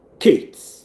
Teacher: Of course, Kate is aspirated. That makes it a variation, a variety of the phoneme ka.